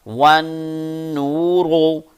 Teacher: اب نون کی آواز کو ناک میں لے کر جائیں اور تھوڑا سا غنہ کر کے یعنی کہ لمبا کر کے تھوڑا سا پڑھیں ساتھ۔